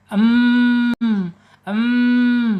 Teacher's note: mim ini ada di asyafatain dua bibir. Kemudian ada di alkhais rongga hidung